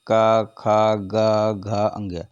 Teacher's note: देखते हैं व्यंजनों का वर्गीकरण उचार स्थान कंठ से क्या होगा कंठ से का वर्ग जो होता है कंठ से ही होता है